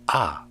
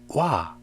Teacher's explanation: In other words, ah is called a monophthong and wa is called diphthong. In Korean, we have a following monophthong: a, e, o, u, 이, 왜, 위.